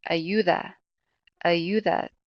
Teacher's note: The emphasis is going to be on that second to last syllable.